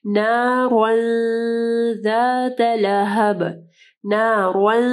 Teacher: تنوین کے بعد ذا جو ہے حروف اخفا میں سے ہے، ٹھیک ہے، تو یہاں پہ اخفا غنہ ہوگا